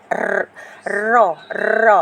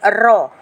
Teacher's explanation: menebalkan sebutan huruf dengan mengangkat lidah ke lelangitnya ketika menyebut. Okey, maknanya huruf ra tu bila awak sebut, serta-merta lidah awak akan naik ke langit awak kan, ke lelangit tu. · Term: tafkhim